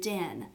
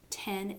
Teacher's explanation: These are both alveolars, and the only difference is that d is voiced and t is voiceless.